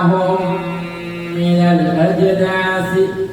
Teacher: Mim mati bertemu dengan mim, idgham mutamatsilain atau idgham mimi